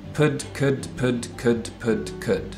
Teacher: a lip sound a tip of the tongue sound da and they're all stops they're all the same kind of obstruction of airflow